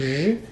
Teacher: It's like an SH sound, but my voice is on. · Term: zh sound